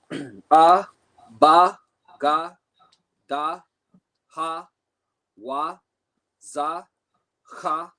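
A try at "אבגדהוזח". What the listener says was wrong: There you go.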